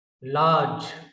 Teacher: So r is not pronounced here